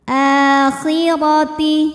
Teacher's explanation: Huruf ra dibunyikan secara tafkhim karena berbaris fathah, maka dibacanya tebal.